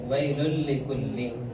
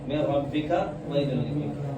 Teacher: غنہ تو نہیں کریں گے لیکن جوڑ ضرور دیں گے